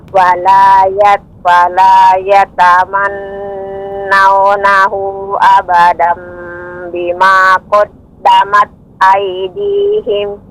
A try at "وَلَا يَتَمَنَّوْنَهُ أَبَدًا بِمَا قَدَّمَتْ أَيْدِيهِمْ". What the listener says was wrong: Naunahu huna ada tanda panjang mad jaiz ya, munfasil, namun kita pakai 4 atau 5 harokat, maka lebih dipanjangkan lagi Ibu.